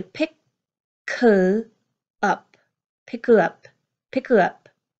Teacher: these three short words at the end, pick her up. They combine together, they link together, and I hear pick her up, pick her up, pick her up.